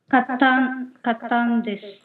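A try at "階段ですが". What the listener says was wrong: ಒತ್ತೇ ಹೇಳಬಾರದು ಎಲ್ಲಿ ಸ್ವಲ್ಪ ಎಳೆದು ಹೇಳಬೇಕು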